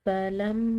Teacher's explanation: میم مشدد ہے، مشدد میم پر غنہ کیا جاتا ہے، تو اس پر ہم غنہ کریں گے